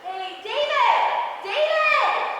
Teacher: But if they put it at the end of a sentence in English, if we're saying like, I'll be like, hey, David, David, we automatically go up in inflection